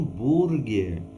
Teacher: diferença na pronúncia porque o h não é pronunciado